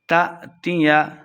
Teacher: تأتیہ حمزہ ساکنہ ہے، جھٹکے کے ساتھ پڑھیں گے